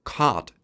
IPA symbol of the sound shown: kɑt